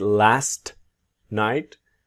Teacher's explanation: And then with last, you will see the silent t.